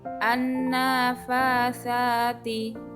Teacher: An-nafatsati, alif lam bertemu dengan huruf nun, alif lamnya tidak dibaca dan dinamakan alif lam syamsiyah